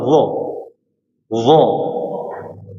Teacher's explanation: huruf dha keluar dari ujung lidah bertemu dengan ujung gigi seri. Jadi pertemuan antara ujung dengan ujung